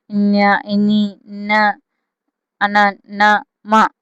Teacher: Next అనునాసికములు. అనునాసికములు అంటే ఏంటండి? ముక్కు నుండి పుట్టినవి